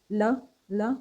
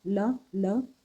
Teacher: ल का आप उच्चारण करें तो हवा दोनों तरफ से निकल जाती है, ल ल, क्योंकि बीच में जीभ रह जाती है हमारी, ऊपर टच करती है जीभ, ल ल, तो ये बगल से हवा निकल जाती है। पार्श्विक, पार्श्व का मतलब होता है बगल से, तो इसीलिए इसका नाम रख दिया है पार्श्विक व्यंजन।